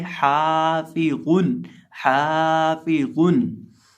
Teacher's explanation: निचले होंठ का वस्त जब सामने वाले ऊपर की 2 दांतों के किनारे से लगे तो हमारा ये फ़ा अदा होता है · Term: फ़ा का मखरज